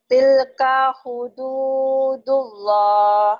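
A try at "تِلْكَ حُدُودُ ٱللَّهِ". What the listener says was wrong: Jangan tilka hu, biasa aja. Tilka hudud. Jangan tilu. Til gitu ya. Tilka hududullah.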